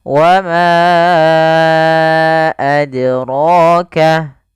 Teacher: huruf dal ketika dia sukun, dia harus ada pantulannya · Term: qalqalah